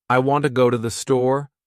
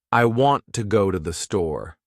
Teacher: The words want, go, and store are stressed. The other words I, to, and the are much faster and softer. That's the natural rhythm of English. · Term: stress-timed language